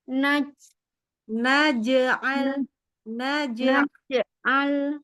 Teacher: Jadi huruf j sama ya itu tempatnya Sama ya Tengah lidah